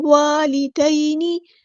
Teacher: نون کی زیر کو ہم لمبا نہیں کریں گے